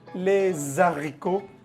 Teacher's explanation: ahí no se hace liaison, es prohibido. J'aime les haricots, así no se pronuncia la H.